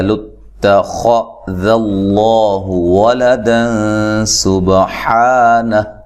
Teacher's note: خا کو موٹا ادا کرنا ہے، تا کو باریک، ذال کو باریک، لفظ اللہ کو موٹا ادا کرنا ہے، اس سے پہلے حرف پر زبر ہے۔